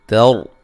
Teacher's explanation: تر تا کو باریک، را کو موٹا ادا کرنا ہے. را ساکن سے پہلے زبر ہے.